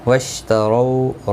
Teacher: ہم میم ساکن کے بعد واو ہے، اظہار شفوی ہوگا. واشتروا رو واولین ہے، تھوڑا نرمی کے ساتھ کھینچ کر ادا کریں گے. را پر بھی پڑھا جائے گا زبر کی وجہ سے.